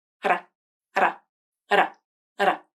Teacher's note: There is no buildup of air, and no subsequent release of air. The tongue tip just flaps up quickly and makes very brief contact with the alveolar ridge. The flap is a lighter D sound, lighter and faster. · The tongue tip touches the alveolar ridge, and it's a quick movement, just long enough to make contact, but not long enough to fully stop the airflow. The flap is voiced, meaning the vocal cords vibrate. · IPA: /ɾ/, ɾ